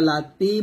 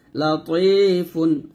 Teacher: তো ত কিন্তু তার মতো উচ্চারণ করলে হবে না, তর মোটা করতে হবে।